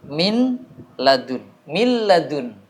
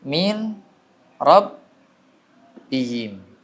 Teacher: Yang lam dan ro ditekan tanpa apa? Tanpa dengung.